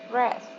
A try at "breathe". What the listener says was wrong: So breath is a noun, and we pronounce breathe as a verb. It's different pronunciation. Breathe.